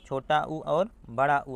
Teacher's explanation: ओष्ठ यानी कि ओंठ से उच्चारित होने वाले छोटा उ और बड़ा उ आता है